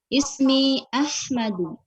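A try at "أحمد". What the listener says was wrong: Kok ha, mana makhrajnya? Ha. Ahmadu.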